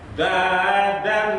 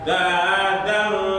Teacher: Dadose dadan N, bukan dadang, ini bukan NG. Ya, N kemudian D. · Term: ikhfa akrob